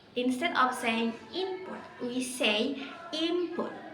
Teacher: P, M, P. So our lips get ready to say P, and instead of saying N, we say M. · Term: assimilation